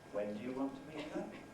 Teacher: if we put the rising tone there on that WH word, really what a speaker is doing is asking for the repetition of some information, because maybe the speaker didn't hear it first time round, or the speaker didn't believe it the first time round. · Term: high rise